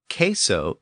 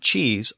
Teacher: of course that same Latin word produced the Spanish word queso within later English the k sound shifted to the CH sound thereby giving us cheese so queso and cheese are both derived from the same old